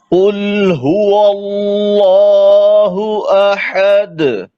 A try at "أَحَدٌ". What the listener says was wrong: अहद गला ना घोटे अहद अहद जी जी ये हा जो है वो हुरूफ रेखवा में से है ना, तो इसमें जरा नरम करके पढ़ेंगे।